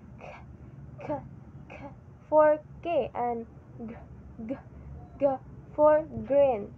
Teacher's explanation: So velar is the sounds produced by raising the back of the tongue to the soft palate and velum